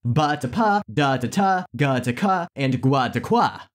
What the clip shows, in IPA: b to p, d to t, g to k, and gʷ to kʷ